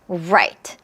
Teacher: 이렇게 숟가락으로 만들려면 혀 끝은 이렇게 올라가 있고 하지만 입천장에 닿지는 않아요. 혀의 입천장 쪽으로 향한다 정도 생각하시면 될 것 같아요. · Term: R 사운드